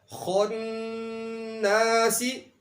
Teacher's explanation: نون کے اوپر تشدید آئی ہوئی ہے یعنی شد ہے، اس لیے یہاں پر غنہ بھی ہے اور مدہ بھی ہے